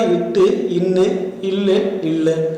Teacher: நுனினாவும் இடையன்னமும் பொருந்துவதால் பிறக்கும் ஒளிகளை நுனினா இடையென்ன ஒளிகள் என்றும் கூறுவர்